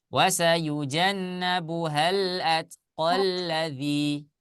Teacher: Fathah biasa bertemu dengan alif bengkok, kemudian bacanya diwasol maka dibaca pendek.